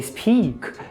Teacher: Você percebe um prolongamento desse I? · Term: I longo